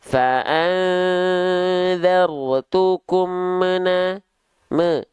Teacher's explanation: ada bunyi vokal e di ujung mim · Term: pantulan